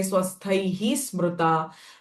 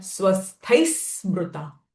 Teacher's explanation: after the visarga sound, sa syllable has come, and because of that, visarga sound will change to sa. So I'm not going to say swasthaihi smruta, but swasthai smruta. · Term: Sa sound of visarga